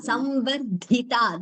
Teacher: Dhi is Mahaprana, Ta is Alpaprana.